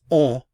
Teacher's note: The form of the verb is the same as the il or elle form, on a. Normally, we don't pronounce the N. If we just say it by itself, it's on. But when you use the verb avoir, because it begins with a vowel, there's liaison, so we have to pronounce the N.